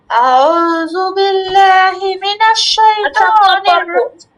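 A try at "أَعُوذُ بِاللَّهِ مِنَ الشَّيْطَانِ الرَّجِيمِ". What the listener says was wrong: আপনি কিন্তু জালটা শক্ত করে আউযু বিল্লাহতে পড়েন, কিন্তু আপনি কিন্তু উচ্চারণটা করার সময় সুন্দর করে করেন, কিন্তু যখন এর সাথে মিলাতে যান তখন কিন্তু আপনি একটু শক্ত করে ফেলেন জালটা।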